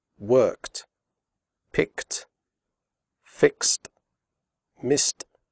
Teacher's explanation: There are three ways to pronounce the final ed of regular verbs in the past simple. After unvoiced sounds such as k, p, f, and s, the final ed is pronounced like t